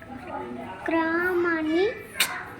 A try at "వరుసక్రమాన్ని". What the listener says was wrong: క్రకు దీర్ఘం లేదు కదా